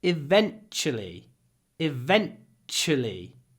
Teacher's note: Tu is pronounced CH